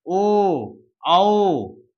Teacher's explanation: कंठ और होठ मिलकर जहां बने हो, ओ, औ, तो इसको हम लोग कंठ ओष्ठ में रखेंगे।